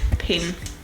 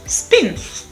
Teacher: i put a superscript h in the first phonetic description so aspirated p in english is usually the initial position in a word like in pin as opposed to in spins